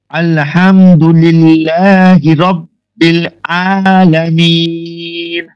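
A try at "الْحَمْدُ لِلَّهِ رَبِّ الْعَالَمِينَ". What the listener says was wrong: ভালো হয়েছে, হামজার উচ্চারণ হয়ে যাচ্ছে আ আ নয় আ, কণ্ঠনালীর মধ্য থেকে আ আ। দাঁড়ান আপনাদেরকে আইনের মাখরাজটা আমি দেখাচ্ছি। দেখুন কণ্ঠনালীর মধ্যভাগ হতে নির্গত হয়, আইন উচ্চারণ হয় কণ্ঠনালীর মধ্যভাগ থেকে, মানে মধ্যস্থল থেকে।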